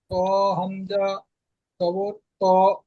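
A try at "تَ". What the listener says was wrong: ত নেই ভাই তা আছে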